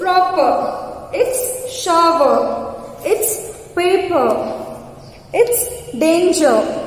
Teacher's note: when the R is placed at lastly, we don't pronounce R